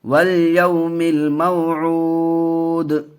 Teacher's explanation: دال کے اوپر جزم آ جائیں گے تو پھر قلقلہ ہوگا، کیونکہ دال حروف قلقلہ میں سے ہیں، تو قلقلہ بھی کریں گے اور حرکت کی آواز بھی نہیں آئے گی، صرف دال کی آواز آئے گی.